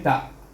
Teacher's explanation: mahras ta dengan huruf mahras hamzah tu jauh, hamzah di bawah sini, sedangkan ta itu di gigi kacip.